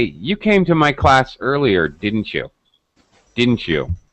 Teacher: i used falling intonation didn't you didn't you low pitch at the end it shows